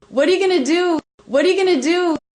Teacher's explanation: So the T at the end of what now comes between two vowel sounds and is a flap T.